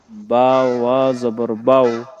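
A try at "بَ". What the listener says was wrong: বা অ বলবেন না, অ বললে পরবর্তীতে হরফের উচ্চারণটা আপনার ভুল হয়ে যাবে। অ, ঠিক আছে, এটা অ বললে কিন্তু পুরো অক্ষরের নামটা চেঞ্জ হয়ে যাবে। অ এভাবে বলেন, বা, বা জবর বা, বা আলিফ জবর বা, বা অ জবর বাউ। ঠিক আছে, কিন্তু এইভাবে বলবেন না।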